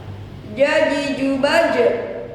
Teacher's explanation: Apabila di sukun huruf jim maka termasuk huruf qalqalah jadi harus memantul.